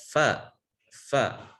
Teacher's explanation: ujung gigi seri atas bertemu dengan perut bibir bawah maksudnya adalah bagian belakang bibir bawah perut bibir bawah maksudnya bagian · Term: huruf Fa